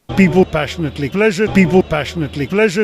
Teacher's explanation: Put out your hand and you say those words, people, passionately, pleasure. You should feel a little puff of air and aspiration coming and hitting the palm of your hand.